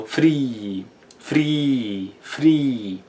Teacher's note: in Old English, the R is rolled, or also known as trilled, so it's a r sound, so you have to roll it, alright?